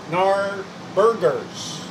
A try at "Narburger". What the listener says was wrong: Narburger. No S. Burger.